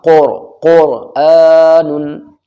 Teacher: قرآن، قر نہیں بولنا، قرآن، کیونکہ را ساکن سے پہلے قاف کے اوپر پیش ہے تو را موٹی پڑھی جائے گی